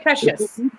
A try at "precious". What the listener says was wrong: No pressure. Do not put pressure on the E. Precious is not that. Precious. Try and eat away this E of the precious. Not silent, but with less force on it.